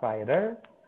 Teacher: kalau di rider itu masih ada gerakan lidah yang ke palatal atas